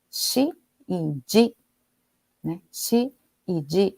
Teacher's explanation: O S e o Z, anterior à vogal I, são realizados respectivamente como, shi e ji